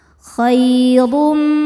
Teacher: Huruf ro dibaca secara tafkhim karena berharokat dhammah tanwin. Cara bacanya ro ditebalkan. Khairum. Berikutnya ada hukum idgham bi gunnah, karena ada tanwin dhammah menghadapi huruf mim.